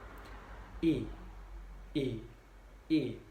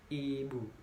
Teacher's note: menganjurkan lidah ke depan dan ke atas disertai dengan menghembuskan udara keluar, sedangkan bentuk mulut dilebarkan dan tidak membundar. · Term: Vokal I